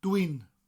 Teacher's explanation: Now it's two words really. It's dwi and un, but they roll together.